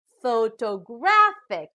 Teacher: this time the stress is on the third syllable